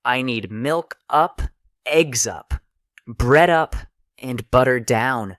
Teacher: Native speakers use rising intonation to show we're not finished speaking and falling intonation to show completion.